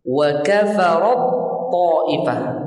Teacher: ta masuk tenggelam ke ta betul-betul.